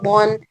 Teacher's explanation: ऊपर तालु को टकराती है और इनके अंदर सिफत इस्तिला है इस्तिला का मतलब है हमारी जबान का बैक साइड ऊपर तालु को जाकर लगता है चिपकता है इसी वजह से ये इसकी आवाज बहुत ज्यादा मोटी हो जाती